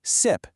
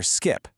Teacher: Dropping the K from that SK cluster makes the word way way simpler to say. That's a classic unmarked simple form.